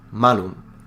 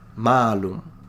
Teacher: the word for evil has a short a, malum. The word for apple has a long a, malum. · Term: phonemic vowel length